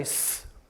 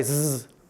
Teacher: when you make a z sound, what you're doing is turning your voice on. Otherwise, your mouth is actually doing the same thing.